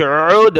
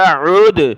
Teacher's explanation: عین نکالیں گلے سے، دال پر قلقلہ، عُد، نون الف زبر نا، عُدْنَا۔